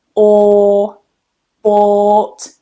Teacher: that OU in bought is not an O, it's just one long vowel sound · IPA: /ɔː/